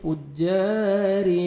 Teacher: را نیچے زیر ہے، را کو باریک کر کے پڑھیں گے